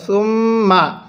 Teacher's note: সুম্মাত্তা, আগে মিমের মধ্যে আমরা গুন্নাহ করব, সুম্মা, মিমের উপর তাজদিদ হওয়ার কারণে সেখানে আমরা গুন্নাহ করব